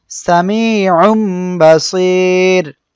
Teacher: এখানে তানবিন এরপরে আমাদের বা আসছে এজন্য আমরা এখানে গুন্না করে পড়বো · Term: ইকলাব